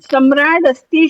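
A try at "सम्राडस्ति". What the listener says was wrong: So you have to make the Jashtva Sandhi. Okay, Samrat. You can't say Samrat.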